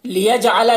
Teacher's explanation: जिम में कलकला होगा